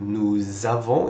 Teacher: And notice, because there is an S over here and the next word starts with a vowel, usually what we will do is we will link these two together with a Z sound to make it sound like nous avons instead of nous avons, two separate words.